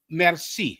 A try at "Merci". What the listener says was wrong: Merci. Say it without the R. So I'll say both so you know the difference out of one. So in French, it would be merci. In Creole, it's merci.